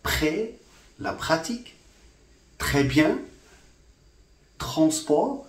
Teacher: after voiceless stops, the r sound in French becomes voiceless. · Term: contiguous assimilation